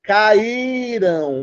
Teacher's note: Então, tem alguns poucos casos que acontecem na língua portuguesa e a gente chama isso de hiato tônico. É quando o I, que não era para ser mais forte que o A, aparece do lado dele e rouba a cena.